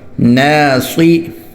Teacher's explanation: نون الف زبر نا، صاد زیر صی، ناصی. نون باریک، صاد موٹا. اس کو نوسی بھی نہیں پڑھنا اور ناسی بھی نہیں پڑھنا، ٹھیک ہے.